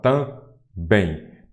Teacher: Também aqui a sílaba tônica é a última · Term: oxítona